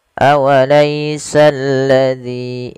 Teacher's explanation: Kemudian pada lafaz zi di sini ada namanya mad tabi'i, kasrah bertemu dengan ya. Panjangnya 2 harokat.